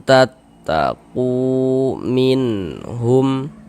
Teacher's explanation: Ada waw sukun sebelumnya harokat dhammah, maka huruf yang memiliki harokat dhammah dibaca panjang. Sehingganya ku dibaca panjang. Mad tabi'i panjang 2 harokat sesuai dengan rumus 2 yang warna hitam.